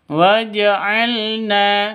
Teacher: Na panjang dua ketukan karena ada Alif diawali dengan fat fathah mad